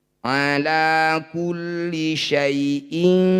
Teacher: Bunyi ya sukunnya baca lembut, berikan huruf vokal i pada ya syai. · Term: madlin